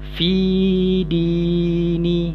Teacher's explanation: awak panjangkan i tu, bunyi panjang i tu datang daripada rongga mulut al-jawfu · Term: bacaan panjang huruf ya